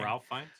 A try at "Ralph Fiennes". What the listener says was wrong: It's Rafe. It's spelled Ralph, but it's pronounced Rafe.